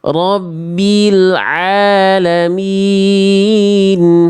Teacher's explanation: Tekan ainnya, jangan jadi hamzah.